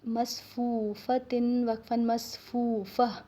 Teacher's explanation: आखिर में गोल ता होती है तो इसको हम जब भी वक़फ़ करते हैं तो हा की आवाज़ निकालते हैं।